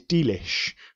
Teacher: This is an elision of the word delicious. Rather than have three syllables, let's chop it down to two syllables. Let's put the stress on the opening D, which wouldn't normally be stressed.